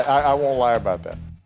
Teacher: sounds like i won't the rest sounds like why about that this t because it's before a th sound isn't pronounced